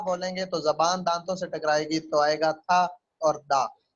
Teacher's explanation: फिर था दा जब बोलेंगे तो ये लिंगुआ डेंटल है। लिंगुआ डेंटल यानी जबान और दांतों के मिलने से बनते हैं